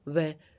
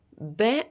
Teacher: ब में तो सिर्फ होठ आएगा